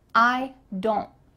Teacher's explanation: the T here is cut out. Your tongue is going to be at the top of your mouth, but you're not going to let the air through.